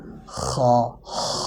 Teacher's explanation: আবার অনেকে আছে যে এভাবে বলে যে [নাক ডাকা] খেটা হবে না। সঠিকটা হচ্ছে খ [নাক ডাকা] উচ্চারণ হবে সাথে সিফাত হামস উচ্চারিত হবে। সিফাতের হামসের বাতাসটা বের হবে।